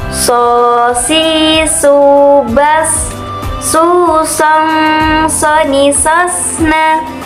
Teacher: Dalam melafalkan huruf shad ini suaranya dikeluarkan sama persis dalam melafalkan huruf sin. Namun huruf shad ini suaranya lebih menebal saat melafalkannya.